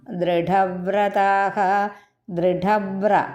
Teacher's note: ഉവ്ര എന്ന് പറയണം അത് ഉറപ്പിച്ച് ഇരട്ടിച്ച് ഉച്ചരിക്കണം